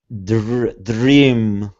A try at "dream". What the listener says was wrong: Jr. Not dr. Okay, push your tongue down. Jr. Jr. Notice how my jaw drops a little bit when my tongue comes down. Jr. Jr. Dream.